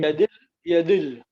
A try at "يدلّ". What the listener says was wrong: Right, so that the lam should have a stress because it's called a shadda. So this is a shadda. There is shadda with a sukun. There is shadda with a sukun. There is shadda also. Yadillu is the dhamma is dropped, and that's why it is dil. So there will be no dhamma.